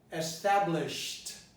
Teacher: the E is not pronounced, and the D is pronounced T